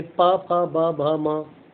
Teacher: फिर प, फ, ब, भ, म, तो जीभ कहाँ पे हवा रुक रही है? ओठों से, तो ओष्ठ है ये।